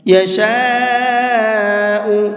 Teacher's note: یہاں پر یہ بڑا مد ہے تو اس کو بھی 4 سے 5 الف کے برابر کھینچ کر کے پڑھیں گے۔